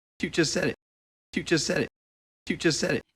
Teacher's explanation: just said again T is dropped two words linked together with a single s sound